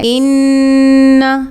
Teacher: نون مشدد ہے، اس کو ہم نے غنہ کر کے پڑھنا ہے۔ ان، اور دوسری بات نون کو لمبا نہیں کرنا، انا نہیں پڑھیں گے کیونکہ الف کے بغیر ہے۔